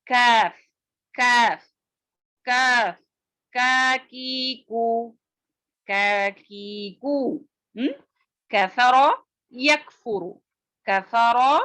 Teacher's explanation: کاف کی آواز باریک اور بغیر جھٹکے والی ہوتی ہے